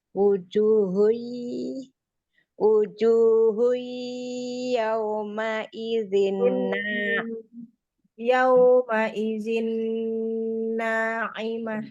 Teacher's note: Nah, yauma izin na'imah lebih panjang daripada matnya. Yauma izin nunnya ditahan lebih lama sedikit. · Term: Nunnya musaddadah